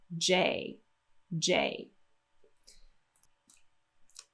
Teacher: we're going to get a high a hard popping just sound and then a nice little slide for the a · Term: hard popping j sound